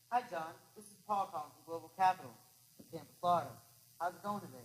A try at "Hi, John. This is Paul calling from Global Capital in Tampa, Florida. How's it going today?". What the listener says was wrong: You were good up to the point you said global capital. You declared. Global capital, he's like, so the fuck what? That's what when you say global capital with a downbeat, mistake. Say, hi, John. This is Jordan calling from Global Capital in Tampa, Florida. Let me hear your upbeats.